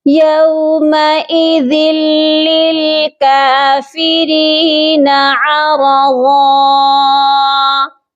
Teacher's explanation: ہم نے اس کی ایک زبر کو پڑھنا ہے اور ساتھ میں ہم الف کو پڑھیں گے اور اس طرح اس کا وقف ہوگا ایک الف کی مقدار لمبا کر کے